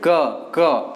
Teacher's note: उच्चारण स्थान जो होता है हमारा क वर्ग का होता है कंठ